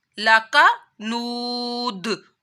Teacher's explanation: जब दाल रुकेंगे तो साकिन हो जाएगा तो दाल के ऊपर फिर कलकला किया जाएगा। وقف کی حالت میں اور واو ساکن سے پہلے پیش آ رہا ہے تو واو مدہ کرنا ہے، اس کو لمبا کرنا ہے.